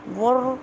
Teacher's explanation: را کے اوپر شد ہے، 2 دفعہ آواز آئے گی